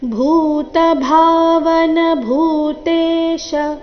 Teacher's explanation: ಭೂ ಮಹಾಪ್ರಾಣ ದೀರ್ಘ ಭಾ ಮಹಾಪ್ರಾಣ ದೀರ್ಘ ಭೂ ಭೂತ ಭಾವನ ಭೂತೇಶ ಇಲ್ಲಿ ಶ್ರಸ್ವ ಭೂತೇಶ ಈ ರೀತಿ ಶೀರ್ಘ ಮಾಡಬಾರದು